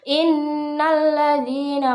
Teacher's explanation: Pada kata innalladzina itu terdapat hukum bacaan matobi'i yang cara bacanya dipanjangkan 2 harokat